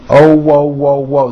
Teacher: There's a little hidden W at the very end.